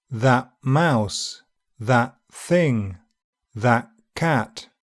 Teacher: the glottal stop is likely to reinforce the unreleased sound by occurring just before the closure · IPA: ʔ